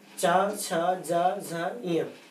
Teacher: जीभ का जो ऊपरी हिस्सा है वो ऊपर की ओर उठ करके और तालु से चिपकता है हल्का सा, जहाँ वायु में अवरोध पैदा होता है और इन वर्णों का उच्चारण होता है।